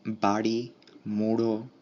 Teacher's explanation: তাড়িত র, ঢ, এগুলো হচ্ছে তাড়িত, কারণ এগুলো উচ্চারণের সময় একবার টোকা দেয়, তাড়াহুড়া করে একবার তাড়না দেয়